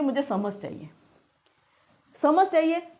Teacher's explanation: उच्चारण करते हैं च का स के रूप में उच्चारण करते हैं अपने भौगोलिक प्रभाव से